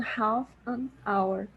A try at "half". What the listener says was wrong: Half an hour. Yes, this word here, we don't really pronounce the L. The L is silent, so we say half. Half.